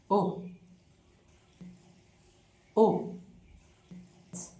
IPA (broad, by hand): ʊ